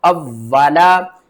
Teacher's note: वाव के ऊपर तशदीद है, सख्ती के साथ पढ़ेंगे